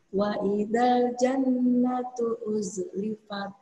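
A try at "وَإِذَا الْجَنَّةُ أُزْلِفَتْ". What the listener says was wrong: Kurang sedikit, seperempat detik. Jannatu, 2 ketukan.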